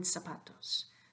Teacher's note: the initial letter Z sounds like an S, and the final S also sounds like an S. So in this row of 3, you never hear a Z sound, ever, ever.